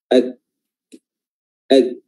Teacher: Mengapa? Karena ketika huruf kaf itu sukun, maka suara akan terputus. Ak ya. Dan ini karena berpengaruh dengan dari sifat syiddah dari huruf tersebut.